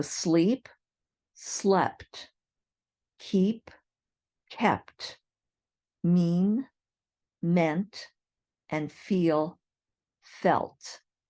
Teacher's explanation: Sleep, keep, mean, and feel are all verbs where that long E sound changes to a short E sound, and then you add a T at the end